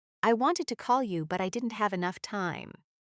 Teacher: The important ideas are wanted, call, and enough time. Other words connect, and reduce.